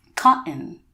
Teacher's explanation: say basically the first half of the word Ka you stop and it's almost as if a fly gets stuck in your throat